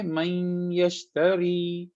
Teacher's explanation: تو یا جب بھی آ جائے گا نون کے بعد، خالی نون کے بعد، تو ہم یا کو نون کے ساتھ ملائیں گے اور اس کو ناک میں چھپائیں گے. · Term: ادغام